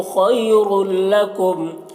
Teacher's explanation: खैरुल लकुम यहाँ पर या लीन है, इसे जल्द पढ़ना है।